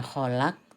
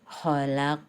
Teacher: Nah, di sini qaf di sini qalqalah juga tapi kubro ya. Harus dibaca mantul tapi pantulannya besar ya. Sehingga bukan kholak tapi harus kholaq.